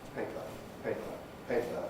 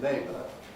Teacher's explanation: still have the Pre-Fortis clipping effect, paper, paper, paper, but in labour, we don't. It's not so noticeable in a two-syllable word, but it's still there.